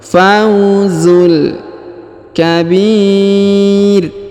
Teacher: huruf Bi dipanjangkan boleh dua boleh empat boleh enam harakat karena di depan huruf b terdapat ya sukun atau ya mati sebelum huruf pemberhentian dan huruf pemberhentian huruf ru